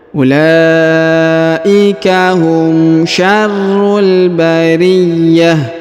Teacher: huruf ta marbutah dirubah menjadi ha sukun